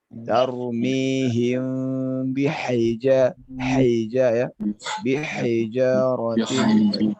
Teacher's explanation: dikeluarkan lagi udaranya lebih dalam karena ini ha pedas